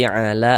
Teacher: La dibaca panjang. Mad thobi'i panjang dua harakat.